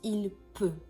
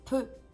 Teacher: There is nothing after, so we just close the mouth and the vowel sound here is a bit more closed E here